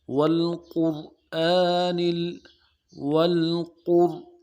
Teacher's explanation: وا کو موٹا کرنا ہے، اور را کے بعد الف مد ہے، کھڑا زبر ہے اس کے اوپر، اس کو ایک الف دال میں کھینچنا ہے